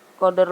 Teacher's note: cara membacanya harus bergerak dan berbunyi seperti membalik huruf dal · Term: qalqalah sugro